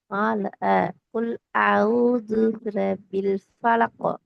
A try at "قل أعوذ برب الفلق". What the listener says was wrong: பிரபில் என்று ஓடக்கூடாது, பாக்கு சத்து இருக்குது. சத்துகள் உச்சரிக்கப்படணும். இல்ல, திருப்பி ஆ எல்லாம் போகுது. ஆ, ஆ, ஆ இல்ல.